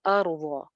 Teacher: अर्ज़ रॉ मोटी हो जाएगी, ज़ाद भी मोटा और भरा हुआ है। अर्ज़ फ़िराशं, शं पे इदगाम हो रहा है, वाव के साथ गुन्ना करेंगे।